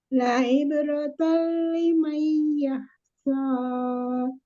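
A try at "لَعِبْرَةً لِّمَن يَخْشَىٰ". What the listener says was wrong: Tahan limanya. Liman yakhsha. Tasdid jangan terlalu lepas juga, Umi, walaupun tidak ditahan ya bila kunnahnya. La ibratan liman yakhsha. Tetap ditasdidkan.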